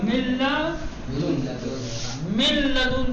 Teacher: کہا گیا ہے کہ نون ساکنہ کو لام میں ادغام کر دیں گے